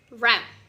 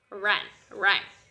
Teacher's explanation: Complete closure in the mouth, but there is still airflow through it. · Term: nasal